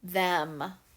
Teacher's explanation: when i say that my mouth is about halfway open so i believe that is a short e sound